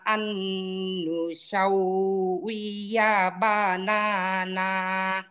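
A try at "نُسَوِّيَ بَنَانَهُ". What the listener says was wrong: এটা সিন, সিনের উচ্চারণটা সা হয়ে গেছে। সাউ, সাউ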